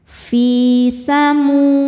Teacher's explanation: Fi hukumnya mad tabi'i dhahiri sebab ada ya sukun yang sebelumnya didahului harokat kasroh. Cara membacanya fi dipanjangkan 2 harokat. Fi samu. Mu hukumnya adalah mad tabi'i dhahiri sebab ada waw sukun sebelumnya berharokat dhammah.